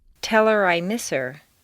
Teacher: on personal pronouns it's common to drop the H